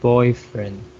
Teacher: boyfriend I put the stress in the boy